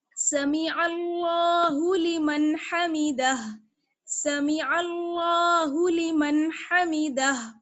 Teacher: نون کی آواز کو چھپائیں گے نہیں، نون کی آواز کو صاف ظاہر کر کے پڑھیں گے، اظہار کریں گے.